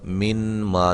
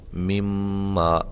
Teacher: نون ساکن کا میم متحرک کے اندر ادغام ہو رہا ہے، یہاں دیکھیں، یعنی کہ ایک حرف کو دوسرے حرف میں داخل کیا اور پھر اس کو ہم نے مشدد کر دیا۔ اب اس میں نون واضح نہیں پڑھا جائے گا، نون کی آواز جو ہے وہ ظاہری طور پہ بالکل ختم ہو جائے گی